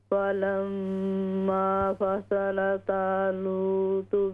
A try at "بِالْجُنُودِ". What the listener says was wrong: بالجنود جیم پر پیش ٹھیک کریں